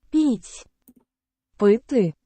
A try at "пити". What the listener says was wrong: Пыты. So infinitive of Ukrainian is ended with e. In Russian ended with мягкий знак. sign, soft letter sign.